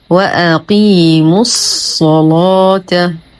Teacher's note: نفخم الصاد ونغلظ اللام لأنها مفتوحة وسبقت بصاد أيضا مفتوحة